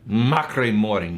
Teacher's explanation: it's not a Trill it's a tapped R it's one tap